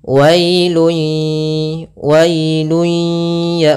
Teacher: dengan Idgham bunah yaitu disertai dengan gunah Idgham Artinya kita memasukkan apa yang kita masukkan adalah suara tanwinnya atau suara nunnya ke huruf ya maka hilang bunyinya tapi dia masih menyesuikan suara bunyi dengan dengan dengan gunahnya wailu